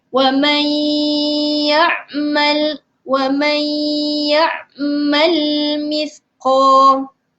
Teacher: Okey. Wa may, kita perlu sembunyikan huruf nun. Okey, kemudian kita sebutkan, jelaskan huruf ya tu. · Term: idgham ma'al gunnah